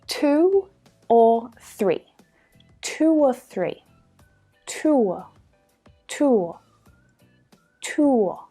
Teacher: we move quickly between those sounds we naturally create that sound it's one continuous sound there's no break between the vowel sounds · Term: vowel to vowel linking sound